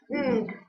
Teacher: The articulators are closed together. However, the uvula is lowered in order to allow airflow through the nose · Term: Nasal consonants